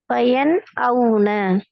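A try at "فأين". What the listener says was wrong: வயன் அவுன அப்படின்னு ரெண்டு சொல்லிக்குது. வயன் ஒரு சொல், அவுன ஒரு சொல். தனியாக அலிப்ப உச்சரிக்கிறது குறித்த வேர்டு ரெண்டு ஆக்குறதாக அமைக்கக்கூடாது. பாருங்க ஃபஐன ஃபஐன கெப் எடுக்கிறோம். ஃபஐன என்றா ஓதுறது. ஒவ்வொன்றா ஓதிருமா? ஏலாது. வேறையாகவும் ஐனைய வேறையாக ஓதிருமா? ஏலாது.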